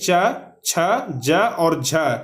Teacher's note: च वर्ग या और तालव्य स, इसका उच्चारण जो है वह तालु से किया जाता है